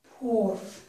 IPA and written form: pʊɹ (POOR)